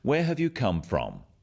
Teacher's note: notice also the falling tone with these questions